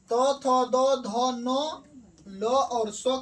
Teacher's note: त थ द ध न ल और स का उच्चारण दंत से होता है।